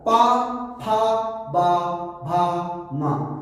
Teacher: पा बोलने के लिए आपको ओठ का सहारा लेना पड़ेगा, इसलिए इन्हें ओष्ठ बोला गया।